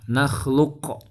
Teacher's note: Jadi qaf sukun itu memang kan dibacanya memantul ya.